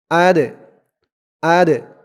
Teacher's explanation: আলিফ টান হবে হামজাহ দাল জবর আর হামজা দিয়ে দাল ধরবে এই দালটা কলকলার হরফ ধাক্কা দিয়ে পড়তে হবে